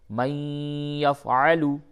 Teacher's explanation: تو یہاں پہ چونکہ نون ساکن کے بعد یا ہے تو ادغام مع الغنہ ہوگا